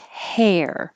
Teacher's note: the vowel like e like head and then the r so you're starting with your tongue in a more flat position and then curling back